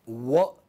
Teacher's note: So, wet, wa as in wet, it is voiced, labial, you know, because lips are involved.